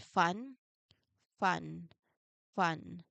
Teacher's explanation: You start with the teeth on lip position and you let the air flow steadily before you open up into the vowel. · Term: unvoiced or voiceless sound